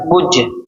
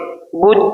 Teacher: بج، اس میں ہماری آواز لوٹے گی، بج، یعنی کہ لاسٹ میں ہم آواز ٹکر کھا کر واپس کو لوٹتی ہوئی محسوس ہوگی تو ہم سمجھ جائیں گے حروف قلقلہ ہے۔